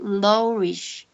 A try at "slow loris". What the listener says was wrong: Slow. Lo. Riz, not Rish. Riz.